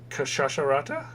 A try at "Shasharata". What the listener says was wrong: No, the K is silent.